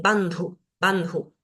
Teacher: Acá en esta palabra tenemos una característica especial en esta D, que es una D para nosotros fácil de pronunciar, pero tiene una H después, este sonido aspirado. Entonces tengo que decir bandhu, bandhu.